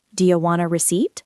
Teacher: Do you becomes dia. Want a becomes wanna. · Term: connected speech